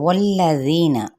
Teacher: واو ہونٹوں کی نا تمام گلائی کے ساتھ ادا کرتے ہوئے لام کے ساتھ ملائیں گے، لام کی حرکت کو لمبا نہیں کریں گے۔ ذی پہ یا مدہ یا مد اصلی بالالف، اس کو ایک الف لازمی کھینچنا ہے، ذی پڑھنا ہے، زینا نہیں پڑھنا، ٹھیک ہے۔